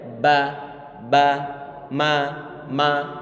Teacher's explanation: Ini contoh yang terakhir di antara idgham mutajanisain itu adalah di saat bertemu antara huruf ba bertemu dengan huruf mim. Ba sama huruf mim mereka adalah satu makhraj. Di mana? Di syafatain, di kedua bibir, nempel ba, ma.